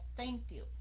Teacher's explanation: phải là Thank you mà là Thank you la lưỡi ra Đọc giống như chữ t vậy đó nhưng mà phải le lưỡi ra